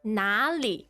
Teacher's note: It's third tone and neutral tone.